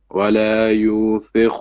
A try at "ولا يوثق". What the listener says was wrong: ولا يوثق قاف.